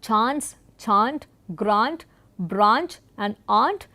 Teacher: in all of these words the long A is getting used instead of the diphthong A